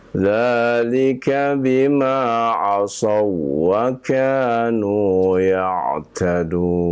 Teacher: Asau tidak boleh ditahan lama-lama, ya Pak, ya. Tidak ada idghamnya ya, tidak ada gunnah ya. Idgham saja tapi tidak gunnah ya.